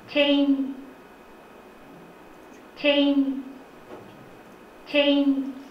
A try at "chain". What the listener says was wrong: Yeah, if you round your lips, then it sounds much closer to English ch sound. So alveolar palatal affricate was used, and also the diphthong is pronounced as monophthong, jan, jan.